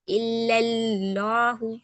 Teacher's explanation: फिर लाम जलाला मोटा पढ़ेंगे।